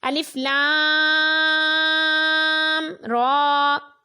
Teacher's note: لام کے اوپر مد لازم ہے، را کو 2 حرکات کے برابر کھینچ کر پڑھنا ہے۔